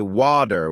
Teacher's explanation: in American English people might say water with a D sound while in British English it's often Wu with a t sound